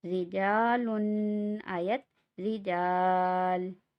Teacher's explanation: را زیر ری، جیم الف زبر جا، رجا، لام دو پیش لن، رجالن آیت رجال. را کے نیچے زیر ہے، اس وجہ سے را کو ہم باریک پڑھ رہے ہیں